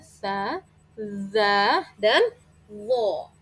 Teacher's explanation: ujung lidah lagi yang menempel pada gigi seri atas